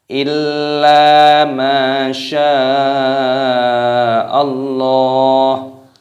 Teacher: Ini mad wajib mutasil dipanjangkan 6 harokat